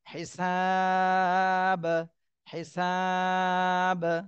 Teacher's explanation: দাল এই পাঁচ হরফে জজম হলে কলকলা করতে হয় তো এখানে যেহেতু বা উপরে জজম হচ্ছে এজন্য কলকলা করতে হবে